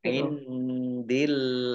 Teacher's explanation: Nun sukun bertemu dengan huruf dal bacaan ikhfa dibaca samar-samar. Allahnya dibaca tipis karena harokat di depannya kasroh. Indillah lam fathah berdiri mat tabi'i tetapi karena bertemu dengan huruf terakhir yang dibaca sukun karena wakof maka menjadi mat arid lis sukun.